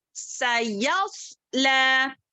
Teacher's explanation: اس کو صاد کو جو ہے موٹا پڑھیں گے, سین کو باریک پڑھیں گے